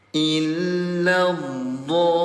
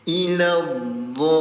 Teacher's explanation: panjangkan selama 6 harokat ayah bunda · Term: mad lazim